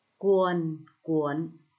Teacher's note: vần uôn có âm đôi uô và âm cuối n